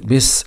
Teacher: باء كسره ب س سكون مع الصفير